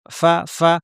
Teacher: ফা স্পষ্ট, আওয়াজ বাতাস থাকবে, ফ্যাঁসফ্যাঁসে ফা ফা